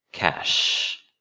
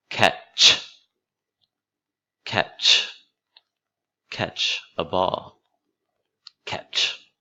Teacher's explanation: notice how much longer the sh sound is than ch.